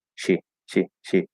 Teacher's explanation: you can kind of make the e like super super short and maybe a little more relaxed